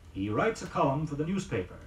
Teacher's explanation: Now the word column, C-O-L-U-M-N. Note that the final N is not pronounced.